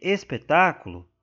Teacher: a sílaba tônica tá aqui ó no tá então é a anti penúltima sílaba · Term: proparoxítona